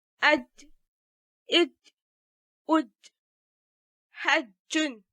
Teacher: As regards its manner of articulation, it is 'affricative'. That is the airstream from the lungs is briefly stopped and later released with a lot of friction. The letter Jim with Fathah pronounced as Ja is a voiced sound. · It is produced by placing the middle of the tongue at the very front of the palate. And because of the closeness of this area to the alveolar ridge, the sound 'ja' produced is called 'alveo-palatal.